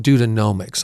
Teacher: I need to make sure I do the long O long O vowel sound there instead of the short O sound.